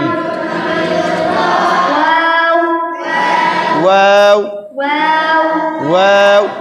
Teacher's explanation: মাখরাজ দুই ঠোঁট না মিলে উচ্চারিত হয়